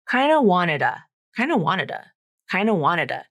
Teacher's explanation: he's reducing that T to a flap and then reducing the oo to the schwa